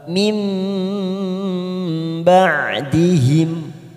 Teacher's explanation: nun sukun bertemu ba namanya bacaan iqlab kita tekan selama 3 detik setiap masuk pada huruf ba mim bardihim karena kita waqaf di sini untuk menjaga nafas kita